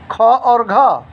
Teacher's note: महाप्राण अधिक हवा से उच्चरित ध्वनि